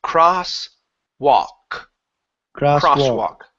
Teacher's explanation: So in this word here, the L is silent. So instead of saying walk, okay, we do not pronounce the L.